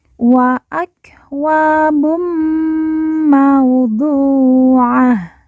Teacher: du kita baca panjang dua harakat karena di depannya terdapat huruf ww sukun atau wawu mati yang merupakan tanda baca panjang dua harakat Wa akwabum mauduah Ta · baca panjang dua harakat Wa akwabum mauduah Ta marbutah di ujung karena wakaf atau berhenti ta marbutah berubah menjadi ha sukun atau ha mati